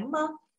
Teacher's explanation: nada netral itu nada yang ringan, pendek gitu ya, ma. Ya, seakan nggak ada nadanya ya.